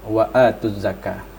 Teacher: Tetapi begitu ketemu dengan huruf zai atau ada tasydid, langsung dibunyikan wa'atuz zakah. Dan cara bacanya lam dihilangkan ya, kemudian masuk kepada huruf zai, wa'atuz zakah. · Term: Alif lam asy-syamsiyah